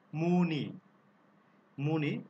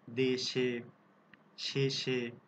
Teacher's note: পদের শেষে, পদের শেষে এ ধ্বনির উচ্চারণ সংবৃত হবে, মানে পদের শেষে যদি কোনো এ ধ্বনি থাকে তাহলে সেটা অবশ্যই সংবৃত হবে, মানে স্বাভাবিক এর মতোই উচ্চারিত হবে, স্বাভাবিক এ আকারে এটার উচ্চারণ হবে।